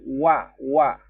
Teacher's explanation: Wa-nya kurang ditekan di bagian bibir. Wa. Orang biasanya bacanya na'budu wa kurang jelas wa-nya.